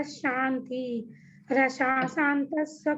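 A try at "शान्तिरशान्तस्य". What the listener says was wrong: नहीं है, र नहीं है, अशांतस्य। वो र जो है ना, वो र नहीं बोलना है। शांति ही और ये मिलके र बनता है।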